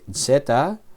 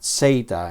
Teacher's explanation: Zeta o zeta, con la vocal corta o la vocal larga, depende del profesor. Algunos enseñan el sonido del nombre de esta letra con la vocal breve, zeta, pero yo lo he aprendido con la vocal larga, zeta. Entonces, esta letra y algunas más, las dos que siguen, las pronuncio con la pronunciación de la vocal larga.